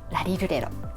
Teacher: Japanese rarirurero is neither l nor r. The tip of your tongue touches the roof of your mouth for a very short time, like a millisecond. And the place the tip of your tongue touches is almost the same as when you say d.